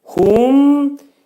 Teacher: Mim hərfi izhar edirik. Ağız yumulur.